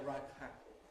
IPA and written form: ə ˈraɪpʰ ˈæpl̩ (a ripe apple)